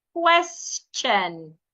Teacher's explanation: When you have letter S before T I O N. Sometimes the T and the I there makes the ch sound.